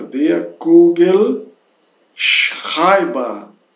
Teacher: Der Kugelschreiber com uma B bastante explosiva, forte